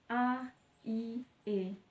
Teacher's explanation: vokal tak bulat diucapkan dengan bentuk bibir tidak bulat atau terbentang lebar, misalnya A, I, E.